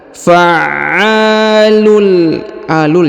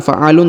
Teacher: Fa'alul, kemudian huruf tanwin un bertemu dengan lam bertasdid maka tanwinnya menghilang, melebur masuk ke huruf lam ditahan dan ditekan.